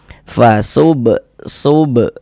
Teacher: Fasubha, di sini ada huruf ba, dia sukun. Nah, kita pantulkan. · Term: qalqalah sughra